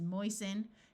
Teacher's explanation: Note that the root is moist, but when we add the suffix, the T sound disappears. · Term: silent T